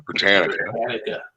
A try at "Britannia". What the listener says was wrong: Britannia. There's no C. Britannica was a dictionary or a encyclopedia.